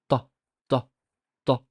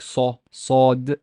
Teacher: The t is not velarized, that means that it does not have the back sound quality. It's not like saw, sawed.